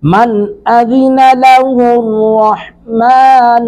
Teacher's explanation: من نون ساکن کے بعد حمزہ، یہاں پہ اظہار کریں گے، حمزہ حروف اظہار میں سے ہے۔